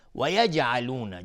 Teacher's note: جیم اینجا قلقله میخواد چون ساکنه